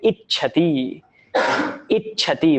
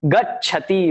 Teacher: And that sha of ish is replaced by cha. And when a vowel is followed by the letter cha, then you get this little extra cha before that cha. So that's what you see there, ich.